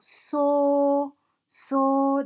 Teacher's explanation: It actually sounds like somebody who's singing a steady high note. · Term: first tone